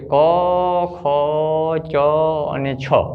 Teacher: ક, ખ, ચ અને છ આ વર્ણોને આપણે જ્યારે ઉચ્ચારીએ છીએ ત્યારે આપણી નાદતંત્રીમાં કંપન ઓછું થાય છે